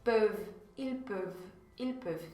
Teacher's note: Então, esse il aí, a terceira pessoa do plural, é que fica um pouquinho mais complicado, um pouquinho menos intuitivo, né? Porque termina com esse ENT no final que não é pronunciado. Você pronuncia até o V, até a última letra que vem antes dele.